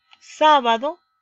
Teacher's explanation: la mayor fuerza de voz está en a donde está la tilde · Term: sílabas tónicas